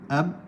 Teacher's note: contoh huruf ba melibatkan makhraj bibir atas dan makhraj bibir bawah. So makhraj bibir atas satu makhraj, makhraj bibir bawah satu makhraj.